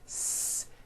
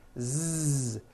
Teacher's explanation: Z. So S has no voicing. S. Z has voicing. Z. So we say the S sound and the Z sound are also paired consonants.